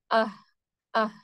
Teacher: ہا لائٹ ہوتا ہے، باریک پڑھا جاتا ہے